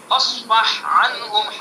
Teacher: ہاں کو الگ پڑھیں گے، عین کو الگ پڑھیں گے۔ ہاں اور عین متجانسین ہیں، ادغام ہونا چاہیے، مگر پھر بھی ہاں کا عین میں ادغام نہیں کرتے کیونکہ ادغام سے لفظ زبان پر بھاری ہو جاتا ہے۔